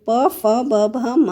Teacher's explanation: ब भ म जो जैसा कि क्वेश्चन में पूछा गया है ओष व्यंजन जो ओठों से बोले जाए जिसमें ओट जो है एक दूसरे से टच होते हैं उसे ओष व्यंजन कहते हैं तो प फ ब भ म